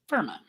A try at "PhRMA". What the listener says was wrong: Firma. Just drop the A from your mouth.